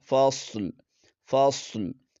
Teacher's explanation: صاد کو موٹا پڑھیں گے اور لام پر وقف کرتے ہوئے لام کو بھی پڑھیں گے